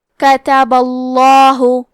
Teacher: آخری میں کیونکہ با پہ زبر ہے تو لفظ الجلالہ کے لام کا حکم ہے تفخیم، تو ہمیں حرف اللام کو موٹی آواز میں پڑھنا ہے